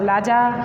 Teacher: मागधी में र को ल मतलब राजा को लाजा